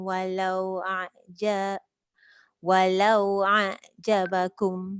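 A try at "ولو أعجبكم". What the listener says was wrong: Cuba jangan tekan ain dulu. Hamzah dulu. Walau a tu. Walau macam tu. Walau a'jabakum.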